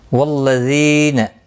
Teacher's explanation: آئیے شروع کرتے ہیں. والذین، ذی یا مدہ ہے، ایک الف کی مقدار کے برابر کھینچ کر پڑھیں گے، نہ کو کھینچنا نہیں.